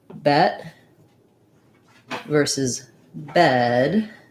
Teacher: But if I just had bet versus bed, for example, bet versus bed, bed has a longer vowel and bet has a shorter vowel